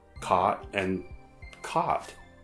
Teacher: In places where these vowel sounds have merged into ah, there's no distinction anymore between caught and caught.